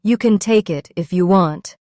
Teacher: We stressed take and want.